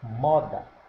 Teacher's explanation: Sílaba tônica, moda, é o mo. Então, a sílaba tônica não é a última, é a penúltima. Oxítona, paroxítona, moda, então é paroxítona, paroxítona, moda.